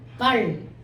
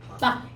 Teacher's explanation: 딱 봐도 뭐가 길어? 발이 길고 박이 짧잖아.